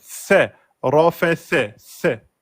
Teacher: la lettre C, la langue entre les dents, on souffle et on sort la voyelle.